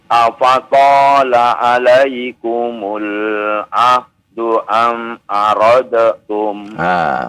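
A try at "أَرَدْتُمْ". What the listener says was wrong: Dalnya masuk ke huruf ta ya Pak ya. Aradtum.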